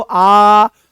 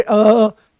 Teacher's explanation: जैसे आप बोलोगे अ आप बोलो देखो पता लगेगा आपको। आ बोलो आ तो पूरा खुला। बोलोगे अ तो आधा खुलता हुआ दिखाई देगा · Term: अर्ध विवृत्त